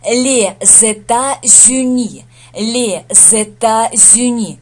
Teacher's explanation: И получается так, что здесь связочка «з» С сливается с Э, получается З, и здесь Э сливается с Ю, получается Зю.